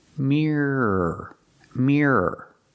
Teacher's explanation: I have to pronounce it with two syllables mirror mirror so don't pronounce it with one syllable Mir like beer and fear pronounce it with two syllables